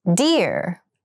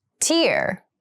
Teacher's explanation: dear has the voiced D sound and tear has the unvoiced T sound